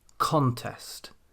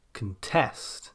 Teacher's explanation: Nouns then tend to place their stress on the first syllable, contest, whereas verbs tend to place their stress on the second syllable, contest.